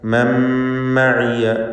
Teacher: സാക്കിനത്തായ നൂനിന് ശേഷമുള്ള മീമിൽ പൂർണ്ണമായും ലയിപ്പിച്ച് മണിക്കുക. ഇദ്ഗാം ബിഗുന്ന.